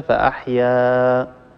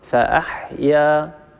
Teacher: مد طبيعي، إذا وقفنا على هذه الكلمة أو وصلناها بما بعدها، المد هو مد طبيعي لا يتغير، نمده بمقدار حركتين